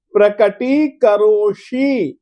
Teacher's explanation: आप लोग स बोलते हो, स नहीं, मूर्धन्य श है।